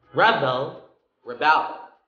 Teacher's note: Rebel, first syllable, that's a noun. And rebel, second syllable, that's the act of rebellion.